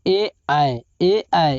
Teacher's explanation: यह कंठ प्लस तालु दोनों से बोला जाता है, इसलिए इसे कंठ तालव्य कहते हैं